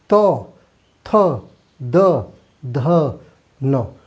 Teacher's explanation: जो जीभ है हमारी वो दांतों पे जाके लड़ती है। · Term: दंत वर्ण